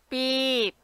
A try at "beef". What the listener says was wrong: Oh, not P. Not beep. Okay, it's like father. Beef.